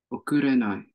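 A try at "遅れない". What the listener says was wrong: Perfect. Okurenai. Nice.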